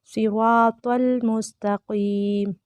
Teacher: स्वाद रा त्वा तीनों मोटे पढ़े जाएंगे